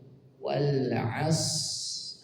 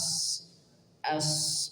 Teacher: Sifat mengalirnya suara dari huruf shad dalam kondisi sukun seperti ini, maka dialirkan dulu. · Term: sifat rakhawah